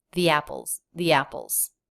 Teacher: when the next word begins with a vowel or diphthong, the letter E is pronounced with the E as in she vowel